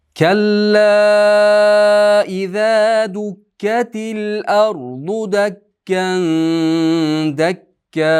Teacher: Dukkatil ardu ro yo'g'on bo'lsin.